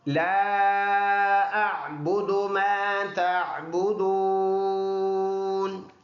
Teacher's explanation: لا کے اوپر چھوٹا مد ہے، 2 سے 3 الف کی مقدار لمبا کر کے پڑھنا ہوتا ہے۔ اعبد، با دونوں ہونٹوں کے ملنے سے، سختی کے ساتھ ملنے سے ادا ہوگا۔ میم الف، یہ والا الف پڑھے گے، یہ الف مدہ ہے۔